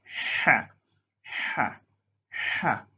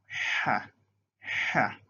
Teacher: a voiceless sound, like a whisper from deep in the throat.